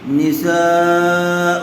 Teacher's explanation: حرف مدہ کے بعد حمزہ اسی کلمے میں آیا ہوا ہے، اس لیے مد متصل کا قاعدہ ہوگا سین کو کھینچ کر پڑھیں گے